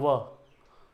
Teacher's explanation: जैसे अ बोल रहे हो ना, वैसे ही य, देख रहे हो जीभ कितना स्थिर है दोनों में ही। या व, होंठ का मूवमेंट हो रहा है, जीभ बिल्कुल ही स्थिर है।